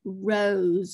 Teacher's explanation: you hear more of a z from that s